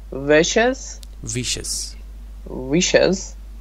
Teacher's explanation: second syllable has a schwa, as you can see here in this right, transcription. · The stress is on the first syllable.